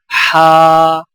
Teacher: ہا کی آواز حلق سے رگڑ کھاتی نکلتی ہے